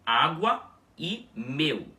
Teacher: esse som de U semivogal que temos na nossa linguagem, que é W, é representado graficamente nesse sistema por um W minúsculo, ou seja, a mesma representação gráfica que a do L quando ele aparece no final das sílabas, ok?